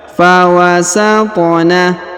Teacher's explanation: Huruf ta berharokat sukun, maka kita pantulkan atau kita qalqalahkan.